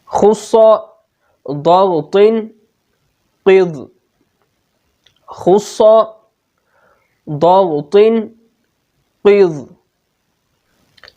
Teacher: حروف مستعلیہ کو ادا کرتے وقت زبان کی جڑ تالو کی طرف بلند ہو جاتی ہے، اور تمام حروف پر پڑے جاتے ہیں، ان میں تفخیم پائی جاتی ہے۔